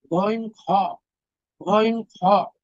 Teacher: তিন নং মাখরাজ হলকের শেষ ভাগ হতে